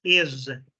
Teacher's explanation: Now, pay attention to the way I pronounce the S. I'm saying is. It vibrates for a fraction of a second. Z, z, like a beat.